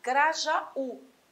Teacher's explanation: a tônica tem de estar em Grajaú lá no u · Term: oxítona